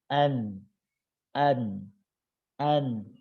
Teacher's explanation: tempelkan ujung lidah pada gusi yang dihadapannya sedikit di bawah makhroj huruf lam itu huruf nun